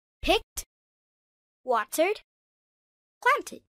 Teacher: In natural English, the sound of ED changes. Picked. T sound. Watered. D sound. Planted. ID sound.